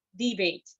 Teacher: if the word is used as a noun, the primary stress is on the first syllable.